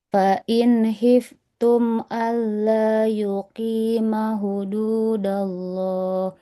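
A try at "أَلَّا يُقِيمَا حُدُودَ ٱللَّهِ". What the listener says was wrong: yuqima, mimnya terlalu cepat Ibu, 2 harokat ya. Alla yuqima hududallah.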